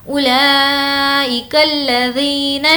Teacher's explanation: واو پر کوئی حرکت نہیں ہے اس لیے اس کو اسکپ کر دیں گے. اولئک الذین، نون کو شین سے ملائیں گے.